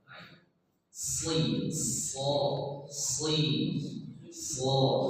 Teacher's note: Ini huruf isti'la. Isti'la itu terangkat pangkal lidah.